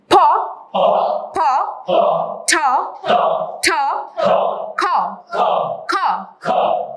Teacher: যখন আপনারা উচ্চারণ করবেন, তখন এটা অনুভব করতে পারবেন যে ভিতর থেকে একটা বাতাস বা ফোর্স আসতেছে বাতাসে। তো এই যে বাতাসের ফোর্সটা আসার কারণে এই তিনটাকে আমরা অ্যাসপিরেটেড সাউন্ড বলে থাকি। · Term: অ্যাসপিরেটিভ সাউন্ড